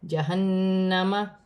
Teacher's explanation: نون مشدد میں غنہ کیا جائے گا